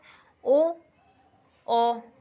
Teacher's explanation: कंठ ओष्ठ स्वर, कंठ ओष्ठ यानी कि जो गले और होठ को मिलान से बनते हैं